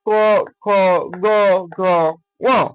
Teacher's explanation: ক বর্গীয় ধ্বনিকে বলা হয় কণ্ঠধ্বনি অথবা জিহ্বামূলীয় ধ্বনি